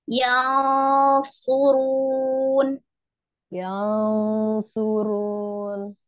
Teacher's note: ikhfa itu bukan mun, bukan mun, tapi samar